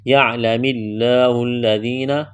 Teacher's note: یعلم اللہ الذین لفظ اللہ کے نام سے پہلے زیر ہے، لفظ اللہ کے نام کو باریک کرنا ہے، لام میں سختی کریں گے، دبائیں گے، ذال کو نرم کرنا ہے، یا مدہ ہے، ایک الف کے برابر کھینچنا ہے